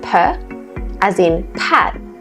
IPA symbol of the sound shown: p